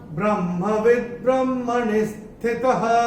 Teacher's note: चौथे चरण में ये जो विसर्ग आ रहा है चरण की समाप्ति पे आ रहा है, तो इसका उच्चारण केवल और केवल ह ही होगा।